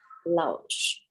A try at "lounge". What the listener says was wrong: I want to hear just this word because I'm actually hearing you skip the N. Lounge. Is it common for Thai to have N's at the end of words?